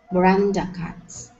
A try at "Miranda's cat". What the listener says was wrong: Okay, so you're putting the S in the wrong place. So you're saying cats when it's Miranda's. Miranda's cat.